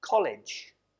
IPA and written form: ˈkɒlɪdʒ (college)